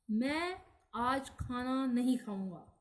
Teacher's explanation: जो है मैं, इस पर बल देने से स्पष्ट है कि मैं आज खाना नहीं खाऊंगा, अपने बारे में कहा जा रहा है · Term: बलाघात